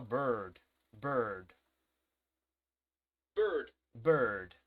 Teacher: Tiene algo de O, algo de U, ¿ok? Y algo de E, es como una mezcla de las tres vocales.